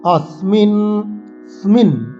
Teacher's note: এইসব শব্দগুলোতে আমরা স দাঁতে লাগিয়ে সকে উচ্চারণ করব। আমরা স এর উচ্চারণ আগেই শিখেছি 3 প্রকার।